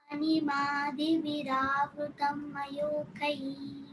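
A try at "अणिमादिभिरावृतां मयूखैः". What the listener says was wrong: Ani, bhira. You're saying bira. There is no bira word over there. It is bhira. So bha mahaprana you should chant.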